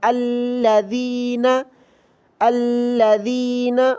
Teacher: یاد رکھیں، جب بھی الف خالی ہو اور اس کے بعد لام ہو تو الف پر زبر لگے گا، پھر پڑھیں گے ہم الذین، الذین، اور دال کو زبان کی نوک باہر نکال کر پڑھنا ہے، الذین پڑھنا غلط ہے۔